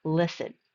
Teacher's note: Again, a stress mark is at the front. The first syllable is stressed, not the second.